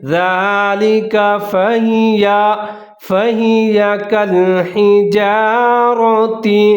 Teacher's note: ذال کے اوپر کھڑا زبر ہے، ایک الف کے برابر لمبا کر کے پڑھیں گے۔ ذالک فہی کالحجارۃ، ہا کا خیال رکھنا ہے، آگے را کو موٹا کر کے پڑھنا ہے، را کے اوپر زبر ہے۔